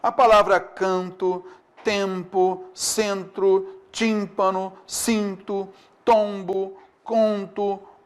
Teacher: Então tem duas letras para apenas um som. Então a única função do M, nesses casos aqui, é indicar que a vogal é nasal.